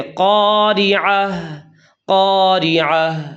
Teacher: اس گول تا کو تاء مدورہ کہتے ہیں اور یہ وقف کی حالت میں ہا بن جاتی ہے، مطلب موٹی ہا ادا کرنی ہے۔